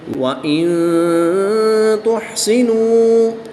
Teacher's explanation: نون ساکن کے بعد تا حروف اخفا میں سے ہے تو یہاں پر اخفا ہوگا یعنی غنہ زمانی کر کے پڑھیں گے